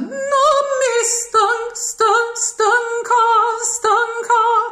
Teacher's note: Minimize that a of stancar, even in the phrase before, no mi stancar. You can minimize it to a schwa, and you can do it here as well.